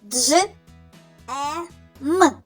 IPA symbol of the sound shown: дж